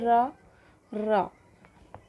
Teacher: आप बोल के देखिए रा, रा, तो कंपन के कारण इसको क्या बोलते हैं? प्रकंपित।